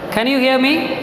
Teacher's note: I asked you a question with a rising tone.